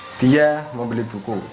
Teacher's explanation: dia membeli buku dengan tekanan pada kata membeli